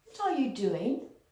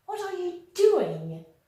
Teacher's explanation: if I use a descending intonation so I'm going to be neutral